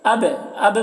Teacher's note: با میں قلقلہ ہوگا، با بھی حروف قلقلہ میں سے ہے، اس کے اوپر جزم ہے